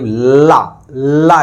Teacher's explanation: ला ऐसे करते हैं तो अगल-बगल से हवा निकलती है क्या जो सांस निकलती है हवा निकलती है वो अगल बगल से होती है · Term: पार्श्विक व्यंजन